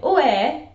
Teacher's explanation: While Dundonian vowels are sort of flat, their intonation goes up and down in a kind of sing-songy way. So "eh" is often said as two syllables, like "eh." "Have you cleaned the house this weekend?